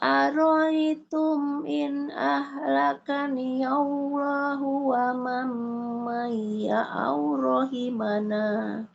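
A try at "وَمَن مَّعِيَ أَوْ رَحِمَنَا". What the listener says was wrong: Huruf ainnya jangan hilang. Ma'iya aw rahimana.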